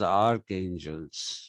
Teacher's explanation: The only sound they had is the one that came with K, K, not ch. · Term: the sound k